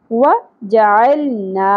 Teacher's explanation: عین وسط حلق سے ادا ہوگا اور لام ساکن پہ قلقلہ نہیں کرنا. زبر کے ساتھ الف حرف مدہ ہے، یہاں پر ہم ایک الف کے برابر کھینچیں گے.